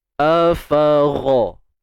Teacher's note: Ghain ni kita pastikan tebal lah bila kita nak sebut tu.